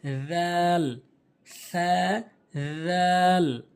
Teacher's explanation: একদম নরম করে উচ্চারণের নিয়ম হচ্ছে জিহ্বার আগাটা জিহ্বার আগাটা সামনে দুটি দাঁতের আগাতে লাগাবেন।